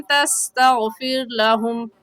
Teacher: استغفرت لہم میں رغا ساکن سے پہلے زبر ہے تو رغا ساکن کو پور کریں گے، یعنی ہونٹوں کو گول کر کے پڑھیں گے، اور تستغفر لہم میں رغا ساکن سے پہلے زیر ہے تو رغا ساکن کو باریک پڑھیں گے، یعنی ہونٹوں کو پھیلا لیں گے